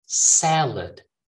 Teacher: When you put the stress in that first syllable, sa, and then lid, salad